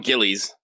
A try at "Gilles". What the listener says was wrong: That's probably the closest to how they pronounce it. Gilles. It's French. The S is definitely silent, but you could call him Gilles.